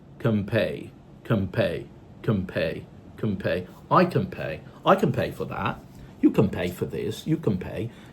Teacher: If you have a nah sound followed by a, for example, p or b sound in another word, you can use assimilation and turn the nah sound into a meh sound.